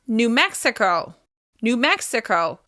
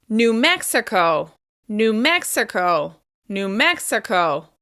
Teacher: we're stressing the first syllable of the second word.